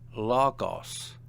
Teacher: Notice the accent on the penult or second to last syllable.